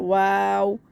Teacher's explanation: واو ہونٹوں کو گولائی میں پڑھیں گے.